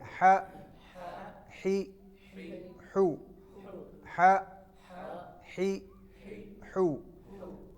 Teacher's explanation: اب یہ تھا وسط حلق، حلق کے درمیان سے نکلتا ہے. اب اس کی آواز گلا دبا کے یہاں سے نکالیں گے تو یہ والی آواز نکلے گی.